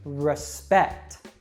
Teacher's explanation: the first syllable that is not stressed has that schwa sound, and we give a strong vowel sound to the second part